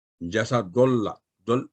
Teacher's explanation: ایک تو دال کو آپ نے پر کر دیا، موٹا کر دیا